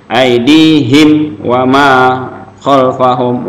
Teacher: Nah, makanya di sini mim mati ketemu dengan waw, berarti dia izhar safawi. Jelas nggak boleh dengung, izhar jelas suara mimnya di bibir.